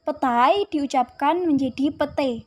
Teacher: perubahan ini terjadi pada bunyi vokal rangkap ai ke vokal tunggal e